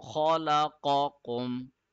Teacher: Kha comes from the top throat and it is a heavy letter